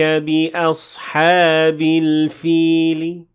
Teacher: Notice at the end of the first ayah there is rawm in the word al-fil, and I said al-fili with a very slight kasra